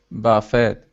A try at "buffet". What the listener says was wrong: For this one, you do not pronounce the T. It's like you would say buffet. So it's I kind of typed it out how you would say it, buffet.